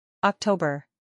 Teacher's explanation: october tres sílabas october acentuación en la segunda sílaba